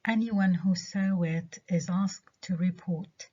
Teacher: حطينا الستريس على الجزء الأول من الكلمة اللي هو any مش one. إذا لما one تيجي مع any, every أو some ما بتاخدش الستريس، اللي بياخد الستريس هي الجزء الأول من الكلمة.